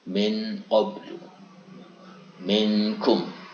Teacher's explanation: nunnya lebih dekat ke idhar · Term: ikhfa abnad